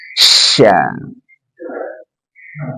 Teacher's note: Shin keluar dari tengah lidah, bertemu dengan langit-langit. Dan ingat dia punya sifat tafashi, semburkan dengan udara.